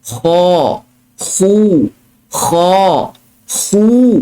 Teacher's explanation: Sama ada huruf kha ini berbaris di atas maupun dia berbaris di hadapan, dia tak bersifat istifal, tetapi dia bersifat isti'ala. Kha, khu, kha, khu, tebal.